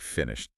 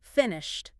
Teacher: when you say finished, listen to that ed ending. It often sounds like a t, doesn't it?